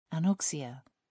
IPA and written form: ænˈɒksɪə (anoxia)